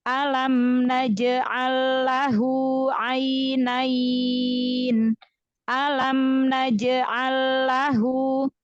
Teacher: Maka idgham mutamad silain. Jadi bacanya lam pertama dileburkan, langsung idgham masuk ke lam kedua.